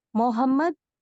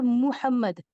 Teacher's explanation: मोहम्मद और मुहम्मद, मुहम्मद में पेश पर मीम पर आप देखेंगे पेश आएगा जो हम मो पढ़ते हैं, और मो sound is a मजहूल sound, is a wrong sound